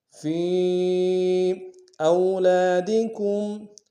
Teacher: حمزہ کو واو کے ساتھ ملانا ہے، واو لین بغیر کھینچے پڑیں گے